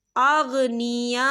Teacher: खाली अलिफ से पहले ज़बर है और इस पर मद भी है, तो हम इसे 4 हरकत के बराबर खींच के पढ़ेंगे।